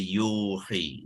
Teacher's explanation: Jadi waw tu jadilah waw mad jadi yuhi ya, dipanjangkan bacaan ya tu kepada 2 harakat ya